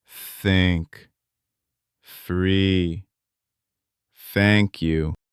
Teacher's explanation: And then you push air through. >> For the soft like think, no voice, just air. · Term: soft th